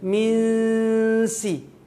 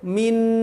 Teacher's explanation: Hilangkan nunnya. Jangan tampakkan nunnya. Masuk ke huruf berikutnya. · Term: ikhfa